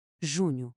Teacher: o nh produz um som nazalado, muito parecido ao do espanhol. · O som faz-se com a língua espalmada contra o céu da boca e o ar a sair pelo nariz. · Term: som nasalado